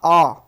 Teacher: जब मुख पूरा खुल जाए तो उसको विवृत कहेंगे। जैसे बड़ा आ कहोगे तो मुख आपका पूरा खुलेगा।